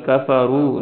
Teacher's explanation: را کو موٹا پڑھیں گے تھوڑا سا لمبا کریں گے کیونکہ اس کے ساتھ واو ہے را واپس رو.